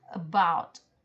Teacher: B-nya ditekan, diperjelas, maka dia adalah stress, dia ditekan.